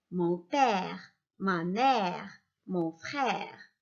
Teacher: Contrairement à l'accent aigu, le E qui porte l'accent grave est un E dit ouvert. En le prononçant, on ouvre la bouche.